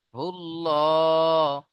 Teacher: আল্লাহ শব্দের লামের আগে কি এসছে এখানে পেশ এসছে তাই না পুর করে পড়তে হবে তাহলে লাম খাড়া যাবে ল [মিউজিক] হুল্লাহ হালাম পেশ হুল হুল্লাহুল